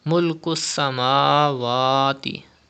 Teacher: Stretch khada zabar on mim and khada zabar on waw up to 2 harakat.